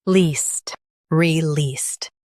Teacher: Emphasize least and keep re light.